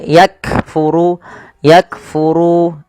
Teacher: Cara membacanya yaitu bacaan syiddahnya dulu. yaitu kaf itu ditahan suaranya ak baru dikasih hames. Hames itu mengalirnya nafas. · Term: huruf kaf